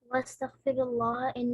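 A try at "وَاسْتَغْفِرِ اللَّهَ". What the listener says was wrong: غلط پڑھا آپ نے. ہاں جی واستغفر اللہ یہ را کی جو زیر ہے کہ واضح ہو.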